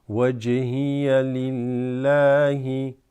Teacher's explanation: There's a slight qalqala on the jim here